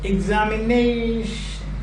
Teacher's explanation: The stress is almost the end of the word.